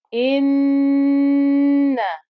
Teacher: You can hear the nasal sound humming noise. That's the ghunna.